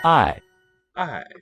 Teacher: Falling tone means love